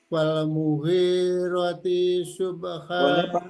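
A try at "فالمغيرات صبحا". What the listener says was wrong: Ronya panjang. Disambungkan Pak Haji, diwasolkan coba.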